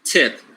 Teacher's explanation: it is aspirated because it is word initial